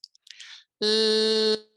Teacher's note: My tongue tip's elevated. I can extend the sound and the air is coming out the side. L, I can just feel that, but it's very gentle. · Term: lateral liquid